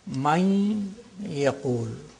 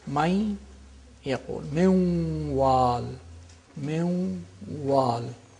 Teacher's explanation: It's not may yaqul, minwal, no. With the nasal quality of the noon is retained, and there is idgham, which is naqis, which is incomplete. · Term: partial assimilation